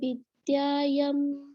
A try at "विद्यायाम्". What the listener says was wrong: यम नहीं याम हाँ, बड़े आ की मात्रा है ना, ब्रह्म विद्यायाम, हाँ आ, ठीक है।